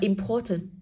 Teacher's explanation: Đọc là important, thì cô sẽ có pro là o dài. Trọng âm ưu tiên rơi nguyên âm dài, âm tiết thứ hai của từ